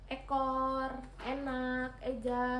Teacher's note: vokal E madiah atas depan dengan posisi mulut semi tertutup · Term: vokal E madiyah atas depan